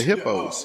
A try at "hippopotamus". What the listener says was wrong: just You got to say the whole word.